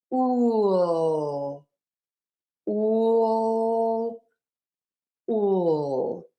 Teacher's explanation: However, when I am presenting, I do try to avoid the dark L because the light L that is made by touching the tip of the tongue to the back of the top front teeth, where the skin and the teeth meet on the roof of the mouth, that is where you are going to make your L and you're going to hold it for a little extra second, and it's going to make you sound much clearer.